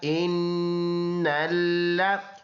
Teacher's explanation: ان الذين، یہ حمزہ ہے، الف پر زبر زیر پیش آ جائے وہ حمزہ بن جاتا ہے، تو یہ حمزہ ہے، تو اس کی جوڑ ہے حمزہ نون زیر، ان، نون لام زبر نل، ان لام زبر لا، ان لا، اس میں غنہ ہوگا ایک الف کے اندازے سے